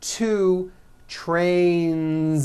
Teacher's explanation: Two trains with a voiced Z ending.